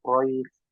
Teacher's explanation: Qafnya tebal ku, ro-nya tebal Quraisy